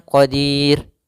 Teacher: kita boleh memanjangkan dua harakat boleh pula empat harakat boleh pula En harakat maka boleh kita baca misalnya Qadir dua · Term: Mad Arid